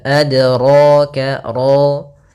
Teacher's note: Kemudian pada lafal ro ditebalkan